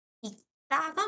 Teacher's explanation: 리을 기역 중에서 기역으로 발음 났으니까 받침이 분명히 자음이 두 개인 거야.